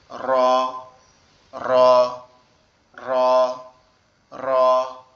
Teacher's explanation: আমাদের জিহ্বার আগার উল্টা পিঠ উপরের তালুর সঙ্গে লাগবে, লেগে উচ্চারিত হবে র র র র।